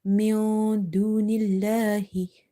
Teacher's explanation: you have to hide this noon sakina sound because dal is from the ikhfa letters.